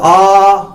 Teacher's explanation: विवर्त स्वर, विवर्त स्वर में मुंह पूरा खुलेगा। और विवर्त स्वर में एकमात्र बड़ा आ ही आता है जब मुंह पूरा आ, जब मुंह आपका पूरा खुलेगा।